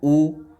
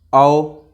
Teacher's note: उच्चारण में होठों का आकार गोल हो जाता है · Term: वृत्ताकार स्वर